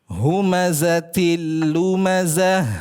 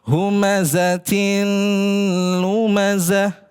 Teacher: Nah, ada di mana idgham bila ghunahnya ahsanta bagus ta marbutah kasratain bertemu dengan huruf lam. Nah, maka di situ idgham bila gunna